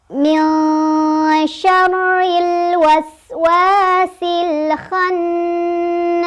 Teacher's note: Jadi nunnya dibaca samar, ya. Dan si lidah kita sudah bersiap-siap ke huruf shin. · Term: ikhfa ausat